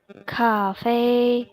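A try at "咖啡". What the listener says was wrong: Paling kurang nyambung dikit, maksudnya nggak langsung disambung gitu. Langsung masuk. Sama huruf selanjutnya.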